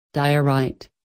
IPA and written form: ˈdaɪ.əˌraɪt (Diorite)